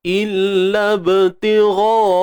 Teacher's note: Ba ini qalqalah sughra, lantunan yang kecil, lantunan yang lemah.